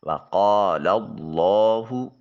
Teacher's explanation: وقال لام کو اس میں جلالت کی لام کے ساتھ ملاتے ہوئے اس میں جلالت کی لام کو موٹا اور پر کر کے ادا کریں گے۔ کلمہ اللہ یا اللہم کے پڑھنے کا طریقہ کار یہ ہے کہ اس سے پہلے والے حرف کے اوپر اگر زبر یا پیش ہو تو اللہ یا اللہم کے لام کو موٹا اور پر کر کے ادا کرتے ہیں۔ · لام کے اوپر کھڑی زبر ہے، اس کو الف المدیہ الصغیرہ کا نام دیا جاتا ہے۔ ایک الف کے قائم مقام اس کو لمبا کیا جائے گا۔